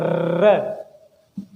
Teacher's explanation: र को बोलने में कंपन, र को बोलने में हमारे मुंह द्वारा कंपन होता है हल्का हल्का। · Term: प्रकंपित